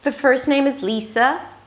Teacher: notice that high pitch at the beginning Again, up-speak at the end. 'The first name is Lisa' It's not a question.